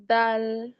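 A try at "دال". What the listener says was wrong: দাল একটু টেনে পড়তে হবে।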